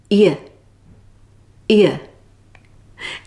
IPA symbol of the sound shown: j